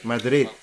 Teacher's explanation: you don't pronounce the D at the end